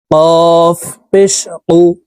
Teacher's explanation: কফ হরফ জিহ্বার গোড়া তার বরাবর উপরের তালুর সঙ্গে লাগাইয়া উচ্চারণ করতে হবে